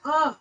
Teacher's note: आ जो है जीभ के मध्य वाले भाग से ये बोला जाता है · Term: केंद्रीय स्वर